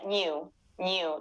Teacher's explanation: it sounds a bit more like nasally almost like the nye in in spanish